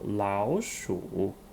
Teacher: Remember the tone changing rule. Tone 3 and tone 3 become tone 2 and tone 3.